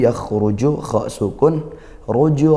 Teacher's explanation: Rnya dibaca tebal karena dommah